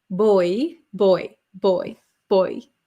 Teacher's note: it sounds like there is like an i sound right